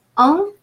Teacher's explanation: EN, followed by a consonant, is pronounced a nasal A